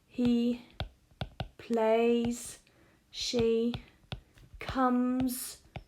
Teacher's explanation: this S sound becomes Z